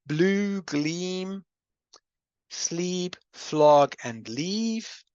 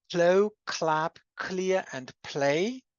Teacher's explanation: I always have a voiced L. But if I have the words slow, clap, clear, and play, I always have a voiceless L in English.